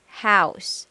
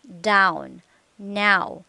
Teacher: your lips position start not rounded but as you move toward ow lips begin to close and become tense your tongue's position moves from relaxed low to high position for